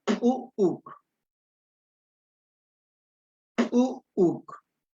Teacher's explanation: divido mi palabra porque es una vocal rearticulada